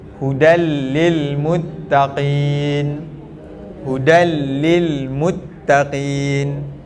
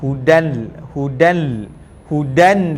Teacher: Dia hudal, masuk terus ke dalam lam. Idgham terus ke dalam lam, tapi tanpa dengung.